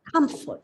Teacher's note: it's of 2 syllables. So as per the rule, the stress should be on the first syllable. So you read the word as comfort.